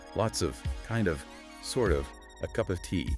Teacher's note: You'll hear that reduced of sound, UV, or uh constantly